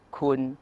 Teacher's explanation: if you pronounce it with a short vowel sara it becomes kun meaning you